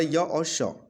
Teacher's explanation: य और श को जो है बोला जाता है आपका तालव्य से